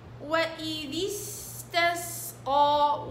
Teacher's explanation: تحقيق الكسر السين والصفير والزمن والرخاوة